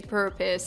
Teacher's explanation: if you're speaking with an American accent, you will pronounce the R. You will say purpose.